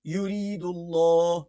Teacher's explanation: یہاں پر یا جو ہے کیا ساکن سے پہلے زیر یا مدہ ہے اور را باریک پڑی جائے گی. یرید اللہ، اللہ کا نام موٹا پڑا جائے گا.